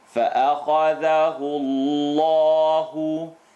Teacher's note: The letter before the lam in Allah, la mushaddad lafzul jalala. The u makes the lam in Allah heavy.